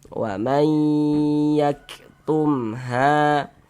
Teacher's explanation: Jadi di bagian maynya itu kita tahan e kita tahan sejenak, kita panjangkan sejenak. Ah, kita dengungkan sepanjang dua harakat.